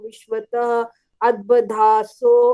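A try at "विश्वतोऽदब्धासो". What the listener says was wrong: यहाँ सो नहीं बोलना, अ नहीं बोलना इसमें। अच्छा, विश्वतो दब्धासो। विश्वतो दब्धासो। हाँ, ये कितनी बार बताया ना, अवग्रह जब आता है, पूर्व रूप है, तो उसमें आवाज मिल जाती है इसमें।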